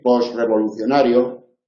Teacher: También se puede decir post revolucionario y eliminar la t